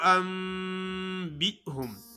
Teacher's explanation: نون ساکن کے بعد با آ گیا ہے، نون کو میم سے بدل پڑھیں گے۔ آگے لوگ پڑھتے ہیں انبئہم، بے ہم نہیں ہوتا، حمزہ جھٹکے سے ادا کیا جاتا ہے، ادا ہوتا ہے۔ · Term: اقلاب